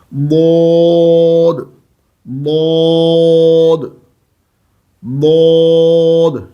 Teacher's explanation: اب دال اور ضاد میں یہی تو فرق ہے کہ دال باریک پڑھی جاتی ہے اور ضاد پر موٹا پڑھا جاتا ہے